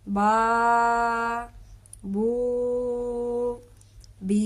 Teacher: جس طرح کہ یہ با الف زبر با، با واو پیش بو، با یا زیر بی. اب ان تینوں الفاظ کو ہم ایک الف جتنا لمبا کر کے پڑھیں گے